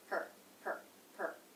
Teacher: that's going to be flat and lower in pitch because it's unstressed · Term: unstressed syllable